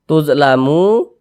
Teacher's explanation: Ada huruf waw, ada tanda sukun, waw sukun, sebelumnya ada harokat dhammah, waw sukun yang sebelumnya harokat dhammah, maka huruf yang memiliki harokat dhammah itu dibaca panjang. Sehingga mu dibaca panjang. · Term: mad tabi'i